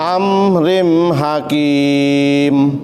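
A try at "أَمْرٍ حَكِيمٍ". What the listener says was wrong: Iya, tadi rinnya kelamaan ya.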